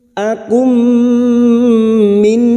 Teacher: Bertemunya mim sukun dengan mim, idgham mimi. Masuk pada huruf mim berikutnya disertai mendengung selama 3 harakat.